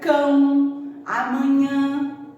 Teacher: Tem bastante encontros vocálicos que saem anasalados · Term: encontro vocálico anasalado